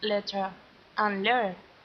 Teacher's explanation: here we have a flapping of an intervocalic T to an alveolar tap. This happens before unstressed vowels like in this example.